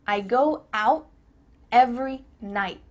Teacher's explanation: your tongue is at the top of your mouth. You're about to make the T sound, but no air goes through. So, it's just stopped at the top of your mouth. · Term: cut off the t